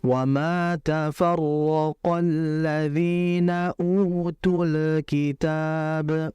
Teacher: Kalau utul kitab itu lamnya enggak jelas. Karena lam memiliki sifat mengalir dalam alirannya tidak terlalu lama. Dan juga jangan memantul.